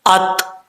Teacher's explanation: یہاں پر حمزہ کو عین نہیں پڑھنا، اکثر لوگ غلطی کر جاتے ہیں